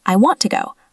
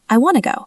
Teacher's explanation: This happens because the T sounds are reduced and combined into a soft N sound.